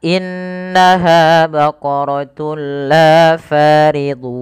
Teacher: am Bil gunah yaitu dengan cara memasukkan tunnya kepada lam dan diganti bunyi suara nunnya menjadi suara lam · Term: idgham bila gunnah